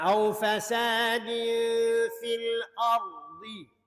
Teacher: Au fasadin fil ardi. Ra sini baca dengan tafkhim. Oleh pasal ra mati sebelumnya fathah.